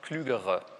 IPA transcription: kly:.gə.ʁə